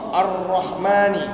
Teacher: Sebab itu ra ni dia punya ra yang paling fasih, dia punya getaran 2 sahaja